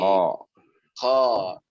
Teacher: Di atas H, Pak. Di atas H berarti di tenggorokan bagian atas. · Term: huruf kha